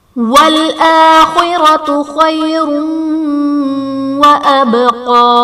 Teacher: وَالْآخِرَةُ خَيْرٌ وَأَبْقَى، خَيْرٌ وَأَبْقَى میں یا ساکن سے پہلے حرف پر زبر ہے، یہاں پر یا لین کا قاعدہ ہے، را پر 2 پیش کی تنوین، تنوین کے بعد حروف یرملون میں سے واو ہے تو یہاں پر ادغام مع الغنہ کا قاعدہ ہوگا، ان تنوین میں ہم غنہ کر کے پڑھیں گے۔ وَأَبْقَى میں با حرف قلقلہ ساکن ہے تو یہاں پر قلقلہ خوب ظاہر کریں گے۔